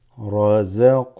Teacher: This qaf is qalqala, slightly shakes.